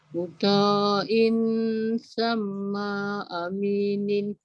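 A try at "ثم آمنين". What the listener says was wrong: Dah betul, tapi ma jangan panjang. Cuba balancekan. Muta'in sama amin. Ma jangan panjang. Sama aminin.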